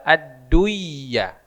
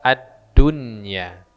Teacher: kaidah semestinya dia dibaca adduya gitu itu kan karena apa Karena nun sukun bertemu dengan huruf idgham bighhunah ya semestinya adduyah tapi karena dia di luar kaidah maka dibaca addunya · Dia nun mati atau nun sukun bertemu ya, tapi dia dibaca izhar.